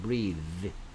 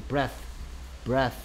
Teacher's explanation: 혀가 물려있는 상태에서 떨림이 있는 유성음 소리라고 합니다. breathe. · 무성음 소리, 혀가 떨리지 않고 바람만 밖으로 내뿜는 소리 breath, breath 이런 식으로 발음한다.